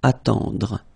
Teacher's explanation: Then attendre, attendre. Remember, final E, you don't insist on it, it just gives you the possibility to pronounce the dr